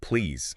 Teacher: >> But the absolutely critical detail, the one learners often miss is that please has to end with a voiced Z sound. Not a sharp unvoiced S.